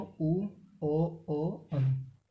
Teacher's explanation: पश्च भाग जिन स्वरों के उच्चारण में जीभ का पश्च भाग काम करता है